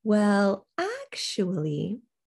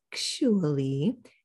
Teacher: actually going way up high and back down with a hook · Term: contrast intonation